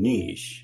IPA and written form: niʃ (niche)